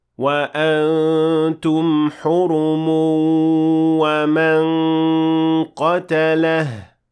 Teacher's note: However, if you keep on reading, you will have to merge or apply idgham with غنة, since you will merge the tanween or the nun sakina in this case with the waw that follows it, and you would say وَأَنْتُمْ حُرُمٌ وَمَنْ قَتَلَهُ.